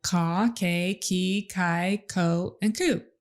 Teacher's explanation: the k sound is made way in the back of his mouth